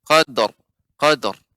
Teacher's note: Nah, adapun qadar ini tipis. Maka ro-nya ditebalkan ibu seperti tertahan